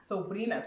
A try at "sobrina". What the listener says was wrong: Sobrina. Perfect.